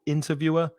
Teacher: interviewer, stress the 1st syllable